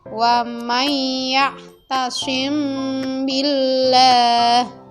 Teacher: cara bacanya adalah dengan menyamarkan bacaan mim sukun atau mati di bibir sambil didengungkan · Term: Ikhfa Syafawi